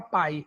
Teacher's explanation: Aliás, se eu quiser ser completa, eu vou dizer que é o ditongo. Ele é decrescente, né? Começa da vogal e vai para semivogal. Ele é decrescente, ele é oral, porque não tem tio, não tem nasalização. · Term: ditongo aí que é oral